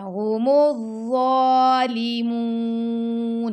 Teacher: زبان کی نوک دانتوں کے کناروں سے لگائیں گے اور ضا کو موٹا بھی پڑھیں گے اور نرمی سے بھی پڑھیں گے. هم الظالی پڑھنا، لے نہیں پڑھنا، هم الظالمون.